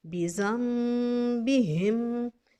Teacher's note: नून साकिन के बाद बा आ गई है, नून के ऊपर मीम है, हमने नून को मीम में बदल दिया।